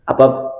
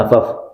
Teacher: Ujung gigi bertemu dengan batnish syafah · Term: huruf fa